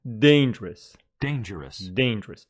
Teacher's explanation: dangerous is an adjective with the stress on the first syllable dangerous dangerous dangerous but danger is the noun for it danger